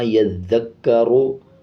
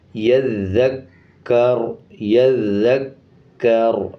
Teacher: جب اس پہ وقف کریں گے تو را کے اوپر کا پیش سائلنٹ کر دیں گے اور را کو آدھا پڑھیں گے۔ ایسے وقف نہیں کرنا یذکرو، بلکہ اس طرح کرنا ہے یذکر، یذکر، را کا پیش ختم کر دینا۔